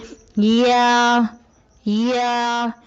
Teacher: زبان کے درمیان کو تالو کی طرف بلند کرتے ہوئے باریک آواز میں پڑھیں